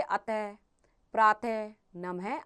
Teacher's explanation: ये जो 2 डॉट होते हैं इन्हें हम विसर्ग कहते हैं और इनका उच्चारण हम अह के रूप में करते हैं, ह के समान होता है।